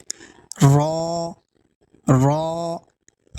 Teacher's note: اور را میں ہمیں یہ دھیان دینا ہے کہ ہم را ایک دفعہ میں پڑھیں، مکرر آواز نہ آئے، یعنی र کی آواز نہ آئے